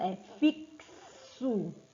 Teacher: Na palavra fixo, acontece o contrário, o acréscimo de um som, porque esse X, ele é trocado pelo KS.